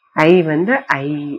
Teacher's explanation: அகரத்தின் பின் யகரமாகிய மெய்யெழுத்து வந்து ஐகாரம் என்னும் நெட்டெழுத்தை போன்ற ஒளிவடிவினை பெறும்